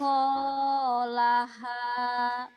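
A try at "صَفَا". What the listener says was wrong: Itu mah safa bukan sako.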